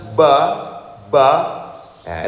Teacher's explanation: Lidahnya mesti turun ya. Ba tipis suaranya nggih.